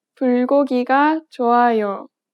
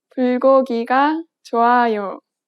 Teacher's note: Native speakers do not place stress on any particular syllable.